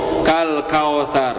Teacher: tidak dimonyongkan bunyinya tidak akan sempurna dan cenderung berbunyi o